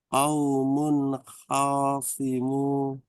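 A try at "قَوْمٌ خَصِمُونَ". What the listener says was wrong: Oh pendek. Khoswimun.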